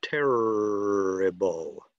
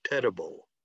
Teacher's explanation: Okay, by the way, that R sound, you can hold the R sound, terrible. You can't hold the flap sound. You can only make it very briefly